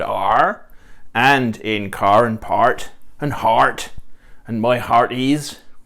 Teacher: one of the important things about talking like a pirate is to have these R's pronounced